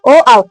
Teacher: ओ ओ औ दोनों का उच्चारण स्थान कंठोस्थ ही रहेगा